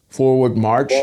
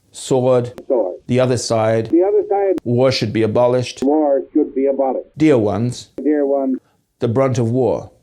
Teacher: He has R's after vowels in some cases